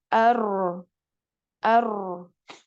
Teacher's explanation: Maka takrir ini bergetar, digetarkan pada makhrajnya.